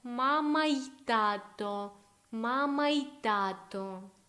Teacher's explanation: Again, I say it almost like one word. So basically, I join this y to my vowel.